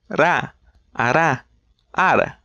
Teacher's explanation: It's an alveolar flap, so imagine you're gonna do a trill, but shy away before the second tap